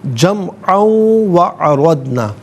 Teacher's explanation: دو زبر کی تنوین کو واو کے ساتھ ملا کر واو کی آواز کو ادا کیا جائے گا، اور یعنی یوں پڑھا جائے گا یہاں پر جمعا وعرضنا، اور اگر وقف کریں گے تو جمعا پڑھیں گے اور وعرضنا سے علیحدہ پڑھنا شروع کریں گے۔